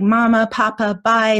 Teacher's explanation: So they're really working on those bilabial sounds.